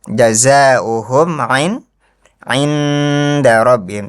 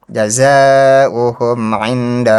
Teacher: Ini kurang dengung saja, kurang gunahnya dikit ditahan.